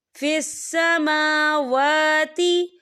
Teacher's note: समावा खड़ी हरकत है, तो हम इसे 2 या 3 हरकत की बराबर खींचे पढ़ेंगे